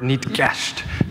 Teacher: that k sound you hear is what's called an ejective consonant